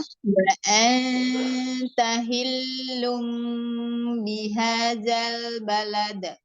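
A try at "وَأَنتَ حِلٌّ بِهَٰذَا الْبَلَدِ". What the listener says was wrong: Fathah pada hamzahnya jelaskan. Buka rahangnya. A dulu, jangan udah masuk ke nun, udah masuk ke ikhfa. Tapi wa anta hamzah fathahnya dijelaskan dulu.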